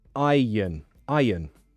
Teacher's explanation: we don't pronounce the r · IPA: aɪjən